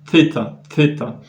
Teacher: Et en fait là ce que j'ai remarqué qui est tout à fait extraordinaire pour moi, c'est que la lettre thêta dans sa prononciation restituée, c'est fêta. Un peu comme en anglais quand on pose la langue derrière les dents. Th, on a on entend ce son feu.